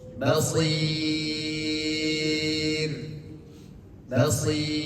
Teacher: Betul, shotnya betul tebal. Tapi ketika penyebutan huruf ro diwakafkan, dia menjadi tipis